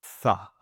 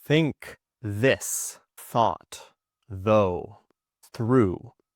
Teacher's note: You can see for all of these, my tongue is between my teeth, and that's how I get that sound. The air is moving out of my mouth as my tongue is placed between my teeth.